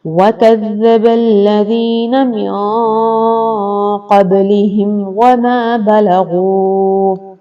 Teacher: جیسے قبلہم وما بلغوا، میم ساکن کے بعد واو آ گیا، میم ساکن کے بعد نہ میم ہے اور نہ ہی با ہے، اس لیے یہاں پر غنہ نہیں ہوگا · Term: اظہار شفوی